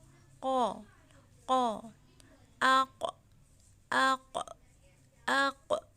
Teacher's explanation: قوف، کاف زبان کی جڑ اور تالو کے نرم حصے سے ادا ہوتا ہے